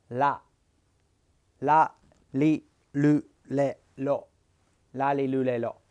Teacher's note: it's not quite an R sound and it's not quite an L sound it's somewhere in the middle